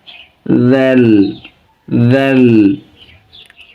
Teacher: জিহ্বার মাথা এবং সামনে উপরে দাঁতের মাথার সাথে লাগিয়ে অনেক নরম হরফ